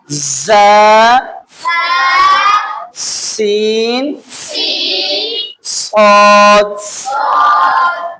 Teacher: ز سین صاد ادا ہوتے ہیں زبان کی نوک نیچے والے سامنے کے دو دانتوں کے پیچھے لگنے سے۔